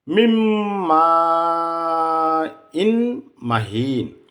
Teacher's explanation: এখানে নুন সাকিন, মিম নুন জের মিন, নুন সাকিন, তারপরে মিম আসছে। নুন সাকিনের পরে মিম আসলে ঈদগামে বিল গুন্না করতে হবে